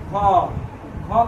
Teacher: तो घ का उच्चारण स्थान कहाँ से, कंठ से।